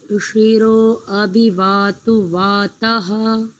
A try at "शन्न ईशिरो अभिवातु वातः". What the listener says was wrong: हाँ, जब आप अभिवातु वाता ऐसा करते हैं ना, तो इससे पहले शन्ना ऐसा करेंगे। शन्ना शन्ना ईशिरो अभिवातु वातः, ये उच्चारण है। ईशिरो से पहले जो शन्न शब्द है इसमें एक त्रुटि हुई थी, उसको शन्न ईशिरो ऐसा करेंगे।